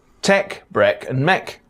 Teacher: some words from the face set are pronounced with the dress vowel